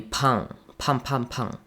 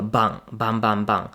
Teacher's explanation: Bang is voiced, which means that it's a bit stronger.